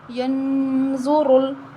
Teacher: اب را کے اوپر پیش آ رہی ہے تو ہم را کو موٹا پڑھیں گے